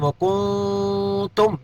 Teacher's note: کیف تکفرون باللہ وکنتم یہاں نون ساکن کے بعد تا آ گیا اخفا ہوگا